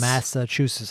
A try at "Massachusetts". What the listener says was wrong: You got to put You got to put T's at the end.